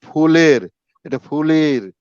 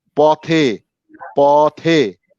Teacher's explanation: একার গুলোকে একারের মতো না হয়ে ইকারের দিকে চলে যেতে চায়। যেমন ফুলের, এটা ফুলের, এই লি এ না হয়ে ই এই ধরনের হয়ে যায়।